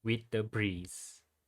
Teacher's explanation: there is also a presence of an anapestic where two unstressed syllables is followed by one stressed syllable